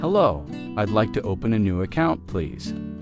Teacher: Notice the stress on open an account, so the purpose is clear.